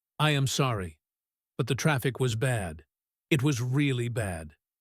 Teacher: She emphasizes really bad to justify her mistake.